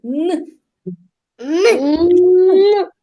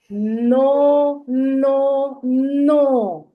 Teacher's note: коли ми вимовляємо звук язичок торкається наших верхніх зубчиків і повітря зустрічає перешкоду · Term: приголосний твердий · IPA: [н]